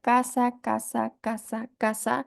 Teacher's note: se transcribiría con una K si decimos casa casa casa casa esa lengua parece estar hacia la parte posterior del paladar